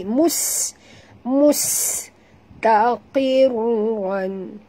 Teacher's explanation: bunyikan safir pada sin yang mati